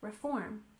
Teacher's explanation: in reform we stress the second syllable